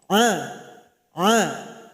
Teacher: Yaitu di tenggorokan pertengahan. Sifatnya adalah bainiah atau tawassud. Aliran suara sedang tidak tertahan tidak pula mengalir. A a. Jadi jangan sampai terbawa ke hidung. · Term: huruf ain